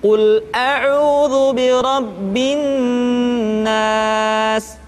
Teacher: ditahan suaranya ketika mengucapkan nun tasydid